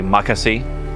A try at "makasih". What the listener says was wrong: The intonation needs to be fixed. More humble. Makasih. Makasih.